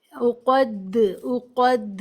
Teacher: कलला मतलब लौटती हुई आवाज के साथ पढ़ेंगे